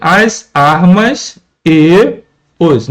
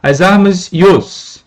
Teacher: A junção entre essas vogais e considerá-las e contá-las como uma única sílaba. Por isso que, por exemplo, no verso inicial da estrofe de do primeiro canto de de osas, nós temos aqui as armas e os, né, as armas yos. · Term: elisão